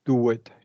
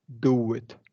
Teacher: I want you to practice closing that do it and emphasizing that W before the it